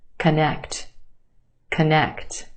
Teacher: first syllable becomes the schwa very quick unemphasized a schwa sound